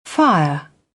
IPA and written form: faɪə (fire)